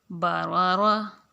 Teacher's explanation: با زبر با، را زبر را۔ یہ دیکھیں اب را کے اوپر زبر ہے تو اس را کو ہم پر کر کے پڑھیں گے۔ باروا، را زبر را، باروارا۔